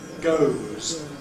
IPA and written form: gəʊz (goes)